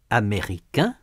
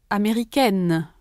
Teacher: in the masculine form, the final vowel is nasal. In the feminine form, it is not.